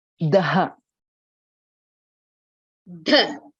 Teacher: So it would be Tavargaha Mriduhu Mahapranaha